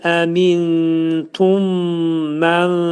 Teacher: Bir mim hərfi dəyir növbəti mim hərfinə. olacaqə eyni cinsli hərf olacaq və burun daxilində sıxılacaq